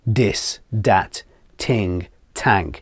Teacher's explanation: quite a few Irish accents tend to do the T and the D sound instead of the TH